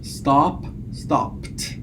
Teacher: it's pronounced as T following voiceless segments